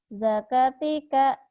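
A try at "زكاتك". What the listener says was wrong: Yang panjangnya mana ya? Ayo, yang panjangnya mana? yang panjang mana, tapi memang lidahnya masih belum nempel.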